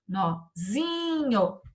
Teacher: A sílaba forte ficou o zi.